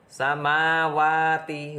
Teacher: huruf berikutnya kemudian keempat dan kelima samawati hukum bacaannya sama yaitu Mad Thobi'i karena fathah bertemu Alif panjangnya 2 harokat